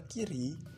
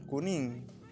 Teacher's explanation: Kalau di kata kiri itu sedikit maju, kalau di kata kuning itu mundur.